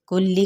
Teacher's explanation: کاف کی پیش کو لام کے ساتھ ملائیں گے، لام کی حرکت کو لمبا نہیں کریں گے